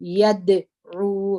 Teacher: په دال کې دوه صفات دي یو صفت د الجهر دي چې اواز په زور د خولې سره وځي هوا بندیږي هوا بند ده او بل دادي چې قلقله ده باندې تجري